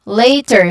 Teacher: So there is a clear diphthong sound here, a, and then a schwa sound at the end.